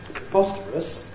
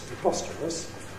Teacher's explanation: Rise on the “rous”. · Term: Fall-Rise